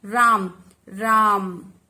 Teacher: तो हमने रा पर ज्यादा बल दिया। ठीक है, उच्चारण से पता चल रहा है कि हमने इस पर। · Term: बलाघात